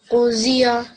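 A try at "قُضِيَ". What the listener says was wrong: Okay, this is not pronounced as a Z, it's a dod. So, qudiya.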